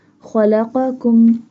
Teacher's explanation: Kha and qaf pronounced boldly, pronounced with a thicker voice because they have green color. · Kha pronounced from the top part of throat